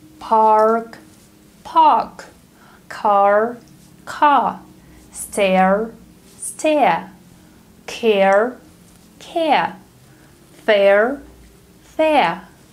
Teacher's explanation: in British English, the R sound is dropped if it goes at the end of the word or after a vowel sound